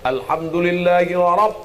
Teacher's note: ra-nya tebal. Bukan ra, tafkhim, tebal.